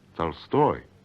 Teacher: So O is pronounced A when it doesn't carry stress. Yes, Huh. but only in the syllable immediately before the stressed syllable, which is what you get in Tolstoy, stressed in Russian on the second syllable. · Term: unstressed O